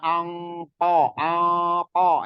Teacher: itu lebih ketara engnya itu khusus huruf Kaf dan qof Nah kalau di Kaf dan Q Itu Memang ikhfanya agak ke Eng lebih kentara